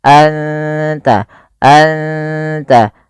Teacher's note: anta, ikhfa hakiki, suara nunnya samarkan ke ta dan tidak boleh dijelaskan, tidak boleh anta, tapi anta, anta, langsung ke makhraj daripada huruf ta.